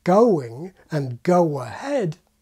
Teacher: The W in ‘going’ and ‘go ahead’ is the glide that’s in the diphthong, and is not in any way an extra, inserted sound.